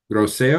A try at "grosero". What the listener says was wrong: Zero. It's an R in it.